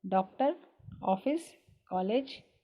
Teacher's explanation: इनकी ध्वनि आ और ओ के बीच की निकलती है। इसे दर्शाने के लिए अर्धचंद्राकार का प्रयोग किया जाता है।